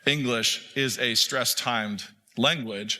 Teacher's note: And so, what that means is that when you say a sentence like English is a stress timed language, the word stress is stressed. The word timed is stressed